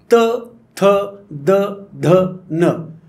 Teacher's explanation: त्यानंतरचे शब्द आले दंत्य शब्द, दाताला जीभ चिटकून किंवा दाताच्या दिशेने जीभ नेऊन